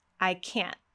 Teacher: Did you hear that glottal stop, that sharp stop of air?